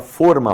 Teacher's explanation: A palavra forma, formato, tem um acento circunflexo ali, tem o som. Som do O é fechado.